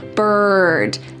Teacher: the word bird and how it uses that colored R, that hard R sound